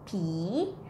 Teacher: The word pi is popping and then sound like e, pi.